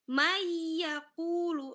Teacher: Seakan-akan nun matinya tidak ada karena dia sudah masuk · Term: idgam